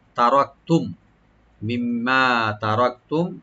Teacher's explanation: রাখবে, রাটা একটু মোটা হবে, আর কাপ একটা হামস করবো, আর মিম সাকিন এখানে আমরা জাহার করবো